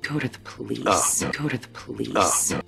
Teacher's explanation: it is very common for natives to pronounce to as a quick duh when preceded by a stressed vowel sound